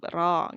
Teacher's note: Digetarkan 2 sampai 3 kali gitu aja cukup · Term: huruf ro